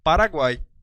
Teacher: esse U é uma semivogal, esse A é uma vogal e esse I também é uma semivogal. Essa é a formação clássica do tritongo.